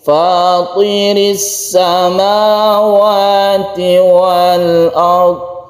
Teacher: kalau to itu kita agak ke langit-langit, lidah kita itu kita arahkan ke langit-langit. Untuk to ini adalah huruf, salah satu huruf isti'la yang cirinya itu mengarah ke langit-langit.